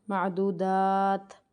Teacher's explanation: دال کو کھینچ کے پھر ہمیں تا کے ساتھ ملانا ہے